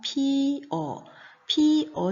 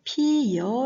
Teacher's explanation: 피어 로 발음되는 것에는 특별한 음운 변동 현상이 나타나지 않는 것이고요 피여 로 발음 됐을 때는 어가 여 로 바뀌어져 소리가 나는 거죠